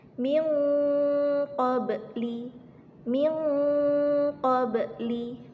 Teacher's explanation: Memang asli sukun dan berada di tengah kalimat. Dan bunyi pemantulannya hanya setengah saja atau kecil sifatnya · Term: qalqalah sugro